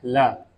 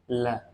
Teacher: जब हम इस वर्ण का उच्चारण करते हैं तो हवा किनारो या बगल से बाहर निकल जाती है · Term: पार्श्विक